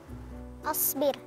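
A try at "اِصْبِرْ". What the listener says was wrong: Asbir. Ya, sebenarnya Kak Irfan pelafalan harakah di kosakata tersebut asbir atau seharusnya dibacanya isbir, ya. Karena kalau asbir itu berarti saya yang sabar. Tapi kalau isbir perintah untuk kamu sabar. Jadi beda harakat sebenarnya, ya. Tapi dari segi arti itu beda.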